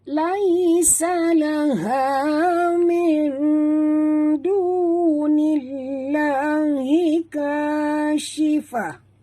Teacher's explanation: Laha min nun mati bertemu dal. Kita kena sorokkan bunyi nun ke dalam dal disertai dengung ya. Sini hukumnya idgham pula. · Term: Ikhfa hakiki